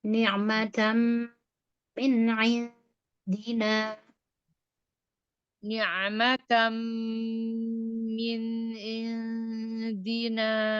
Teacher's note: Ya, kalau langsung ini perlu perhatian di huruf ain. Perlu dipaksa ditekan katup tenggorokan, makhraj ain ya. Kemudian alirkan sifat bainiyahnya ya.